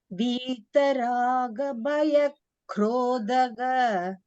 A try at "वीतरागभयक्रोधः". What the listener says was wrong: Tha Mahaprana was missing first.